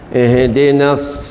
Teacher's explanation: Huruf sad di mana lidah kita. Lidah kita mesti kena gigi bawah.